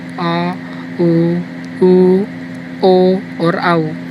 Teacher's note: पश्च स्वर, पश्च का मतलब है पीछे वाला। वे स्वर जिनके उच्चारण में जिह्वा का पिछला भाग क्रियाशील रहता है, पश्च स्वर कहलाते हैं।